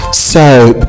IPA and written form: səʊp (soap)